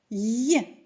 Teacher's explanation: звук й не можна довго протягнути і вимовляється він м'яко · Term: приголосний м'який звук